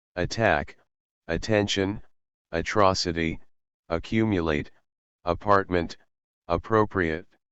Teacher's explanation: se trata de sonido vocálico neutro que se ubica justo al medio de nuestro esquema y por esta razón es muy fácil confundirlo